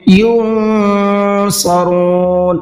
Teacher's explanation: یہاں نون کے اندر اخفا کریں گے اس لیے کہ نون کے بعد میں صاد آ رہا ہے اور یہ صاد اخفا کے حروف میں سے ہے، تو اب کیا کریں گے؟